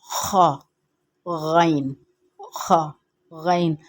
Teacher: ابتدائی حلق سے ادا ہوں گے۔ یہ جو حلق کی یہ جو ریڈ جگہ ہے یہاں سے، یعنی کہ تالو کے قریب سے ہم تالو سے آواز نکالیں گے خا، یعنی جیسے کہ خارش ہوتی ہے ہمارے حلق میں، تالو میں خارش ہوتی ہے تو ہم کس طرح کرتے ہیں، اس طرح سے کہیں گے خا، غین، خا، غین۔